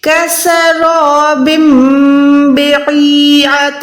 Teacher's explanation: نون ساکن یا تنوین کو ہم نے میم میں بدل کر پڑھنا ہے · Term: اقلاب